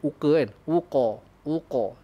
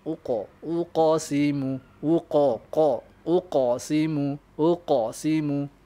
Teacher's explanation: Walau bagaimanapun, qalqalah ni anda kena tebalkan. Sebab apa? Sebab qaf ni huruf yang bersifat tebal lah. Bersifat tafkhim, mufakhama.